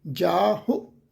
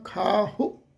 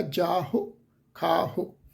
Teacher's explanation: ਹਹ ਦੀ ਔਂਕੜ ਹਲਕੀ ਜਿਹੀ ਟੋਨ ਚ ਉਚਾਰਨ ਹੋਏਗੀ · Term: ਲਘੂ ਮਾਤਰਾ